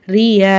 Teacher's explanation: தத்ரூஹுர் ரியால ராக்கு கீழ ஜேர் இருக்கு ராவை லைட்டா ஓதணும்